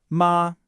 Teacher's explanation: For mother, it's high and flat like this.